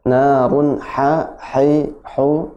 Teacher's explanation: Jadi ada dua ya. Ada ha yang di tengah tenggorokan, benar-benar ditekan sih.